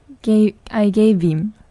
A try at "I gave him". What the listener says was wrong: 그 정도. 대신 좀 빨리 발음해야지. I gave him. 왠지 힘이 남아있는 그런 느낌이 들죠.